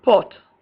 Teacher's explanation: back, open, lax, and rounded, as in pot, waps, tall, bam.